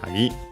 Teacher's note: Then we have the term kagi, key, but technically also lock. Kagi, accent on the last syllable